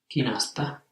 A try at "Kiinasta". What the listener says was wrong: Not Kinasta, but with two eyes. Kiinasta. In the spoken language you can hear the A dropping out. Kiinasta. Kiinasta. Take off the A. Kiinast. So ST is very strong.